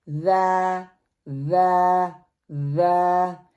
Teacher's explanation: ज़ा जो है नरमी से अदा होने वाला लेटर है, ज़बान की नोक को ऊपर के सामने वाले दो दांतों के अंदरूनी किनारे से लगाया जाता है, फिर जो है ज़ा जो है वो प्रोनाउंस होता है।